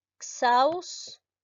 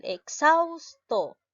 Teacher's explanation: la mayor fuerza de voz lleva en la sílaba xaus. Es una palabra grave y las graves no se tildan cuando terminan en vocal.